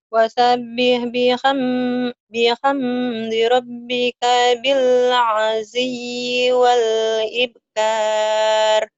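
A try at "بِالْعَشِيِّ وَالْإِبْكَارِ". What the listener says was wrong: Bagus cuman shinnya nih. Bil asyiyyi wal ibkar. Sinnya kecil yang ini mah. Sin ini mah.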